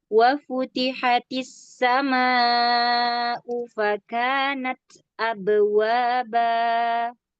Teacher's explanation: huruf ba, hurufnya jahar, syiddah, qalqalah